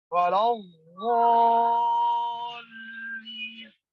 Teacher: غاد کی آواز ابھی ختم نہ ہو کہ لام کی آواز شروع ہو جائے